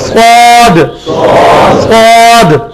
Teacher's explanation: سین میں بھی سیٹی کی آواز, سواد میں بھی سیٹی کی آواز, کوئی فرق نہیں.